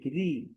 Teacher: ইকারের মতো যখন উচ্চারণ হয় তখন রটা পাতলা হয়ে যায়